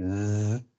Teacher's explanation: So if you say Z, you have your voice box vibrating. And with an S, you don't feel anything here.